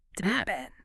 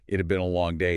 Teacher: >> as a contraction, your mouth is forced to add an entirely new lazy syllable right in the middle, a schwa sound. It It >> It'd been.